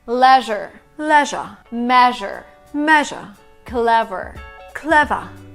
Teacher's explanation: Americans love the sound R, and British people tend to diminish or just miss it at all